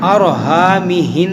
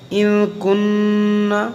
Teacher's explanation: نون مشدد اور میم مشدد میں غنہ کرتے ہیں